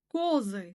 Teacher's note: Козы ударение бірінші буынға оға түсіп тұр. Яғни, а әрпінен о әрпіне ауысты.